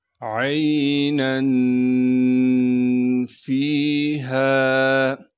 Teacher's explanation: عین کو صاف کر کے گلے سے ادا کریں گے اور عین کو آگے یا ساکن سے ملانا ہے، نون پر اخفا یعنی غنہ کریں گے، نون کے بعد الف موجود ہے اس کی وجہ سے ہم نے کھینچنا نہیں ہے، یہ الف اس لیے ہے کہ جب نون پر ہم وقف کریں گے پھر الف کو ہم ایک الف کے مقدار کھینچیں گے۔